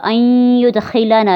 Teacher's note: یہاں پہ نون ساکن کے بعد حروف یرملون میں سے یا ہے، یہاں پہ غنہ کریں گے